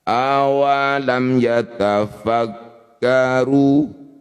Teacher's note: masih ada jedah satu harakat kesempatan untuk menyempurnakan huruf mim. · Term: izhar syafawi